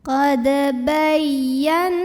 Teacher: Huruf ya tasydid tapi sebelumnya bukan tanwin, bukan juga nun sukun, maka ini tidak perlu ditahan ya. Ini dibaca dengan nabr, bukan idgham. Jadi agak dinaikkan intonasinya ya.